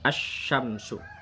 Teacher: Nah, kalau syamsiyah, alif lam syamsiyah, ini alif lamnya tidak terbaca karena dimasukkan langsung ke huruf yang sesudahnya.